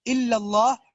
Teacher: الا اللہ وہاں پر لفظ الجلالہ ہے تو پھر وہ موٹا ہے